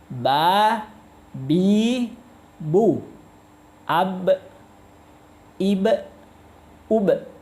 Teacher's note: Coba kedua bibir atas bawah ketemu